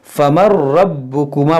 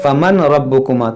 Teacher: نون کی یہاں پر آواز ہی نہیں آئے گی, نون سائلنٹ ہو جائے گا یہاں پر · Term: ادغام تام